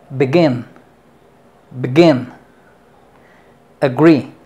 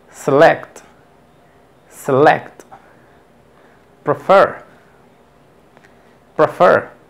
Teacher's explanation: ahora el acento en la segunda sílaba